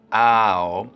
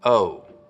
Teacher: What they're doing is raising the start of the diphthong in words like out and about, so that instead of it starting very open, ow, it's starting from somewhere in the middle of the mouth, oh.